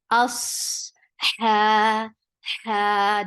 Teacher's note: Us, hamza is very sharp for fatha upon your jaws, and attached with sod. Sod is heavy, and it will get rakhawa, and it has safir. There should be a whistle sound in sod. Us, and the sound of sod should flow because there is rakhawa.